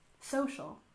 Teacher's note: we stressed the first syllable in social · We stress the first syllable in social, social, and the first syllable in justice, justice.